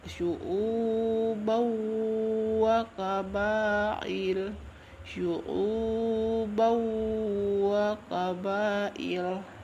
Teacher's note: Ya, jadi selain kedua cara membaca di atas, jika terdapat nun sukun atau tanwin bertemu dengan huruf tertentu, maka dibaca, cara membacanya ya, suara n-nya itu menjadi hilang dan masuk ke huruf sesudahnya, atau dimaksud dengan idgham. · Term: idgham bigunnah